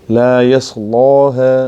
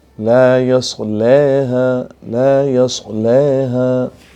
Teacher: تغلیظ کے ساتھ الف میں فتح پڑھیں گے اور ترقیق کے ساتھ تقلیل کریں گے